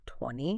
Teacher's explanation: The T in 20 often disappears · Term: illision, elision